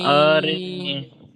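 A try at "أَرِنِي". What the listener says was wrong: নিটা টান দিতে হবে মাদ্দা। নিটা টান দিতে হবে, এটা মাদ্দা বললেন তো, তো মাদ্দা টান দিতে হবে না। যেমন আরিনি। জি, তাহলে হারাকাত টান দেওয়া যাবে না, মাদ্দা টান দিতে হবে। এটি হারাকাত, টান দেওয়া যাবে না।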